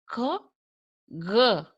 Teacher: While producing this sound, the back of the tongue touches the soft palate or the velum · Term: velar sounds